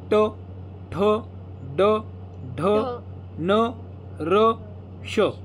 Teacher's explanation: जे वर्ण उच्चारताना आपल्या जिभेचा शेंडा मूर्धेला जाऊन लागतो त्यांना म्हणायचं मूर्धन्य वर्ण.